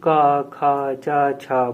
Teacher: बहुत ही आसानी से बोला जा रहा है इसमें कंपन नहीं हो रहा है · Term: अघोष